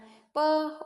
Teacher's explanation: प ओष्ठ से बोला जाता है